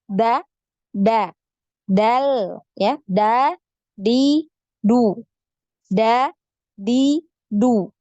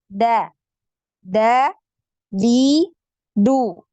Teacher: Punggung lidah Antuna ini ditempelkan di bagian tempat tumbuhnya gigi atau di pangkal gigi seri atas. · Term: huruf dal